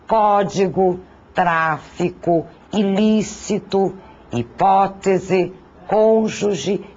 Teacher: São as proparoxítonas, isto é, aquelas cuja sílaba tônica recai na antepenúltima sílaba. Todas são acentuadas.